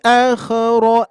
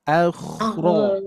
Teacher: Perlu melatih pengucapan kita di huruf kho yang mana posisinya ada di tenggorokan bagian atas atau pangkal lidah paling dalam